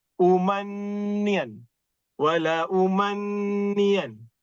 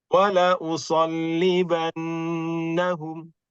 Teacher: Dia punya nun musyaddadah lama sikit. 2 harakat. Kalau saya ajar, saya suka 2,5.